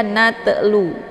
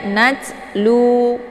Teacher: Najlu, jangan dibaca natlu ya, tidak boleh dipantulkan, jangan sampai keluar bunyi te, karena yang terbentuk suara di sini adalah desis anginnya, bukan pantulan hurufnya ya.